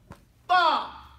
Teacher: it pops out harder than any other letter in the whole Arabic alphabet